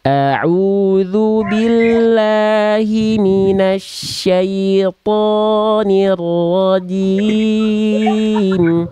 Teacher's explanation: vokal O jangan sampai dimonyongkan. Diangkat pangkal lidahnya. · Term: huruf tebal